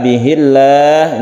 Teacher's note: ini lafdzul jalalah yang dibaca tarqiq atau tipis karena sebelumnya ada kasrah